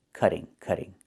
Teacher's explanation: in America, we change the T to a fast D when it's between vowels